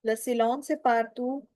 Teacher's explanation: T doesn't have any sound at the end.